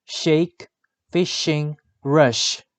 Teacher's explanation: The description of sh is voiceless palato-alveolar fricative.